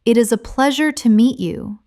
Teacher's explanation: When you listen to sentences like, "It is a pleasure to meet you," notice the rise and fall of the tone. The voice goes up slightly at pleasure and falls gently at you.